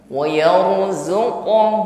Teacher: qof sukun dipantulkan ada Qalqalah di situ